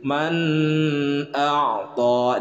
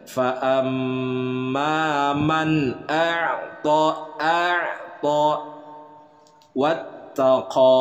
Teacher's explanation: nun sukun berhadapan dengan huruf alif, hukum bacaannya adalah izhar, dibacanya jelas. Jadi tidak disertai gunnah